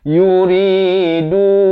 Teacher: ri dibaca 2 harakat, du dibaca 4 atau 5 harakat